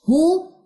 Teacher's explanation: वाव खाली मा कबल पेश, इसको कहते हैं वाव मद, 2 काउंट्स लंबा करें